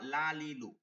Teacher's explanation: জিহ্বার আগার কিনারা সামনের উপরে দাঁতের মাড়ির সঙ্গে লাগায় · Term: লাম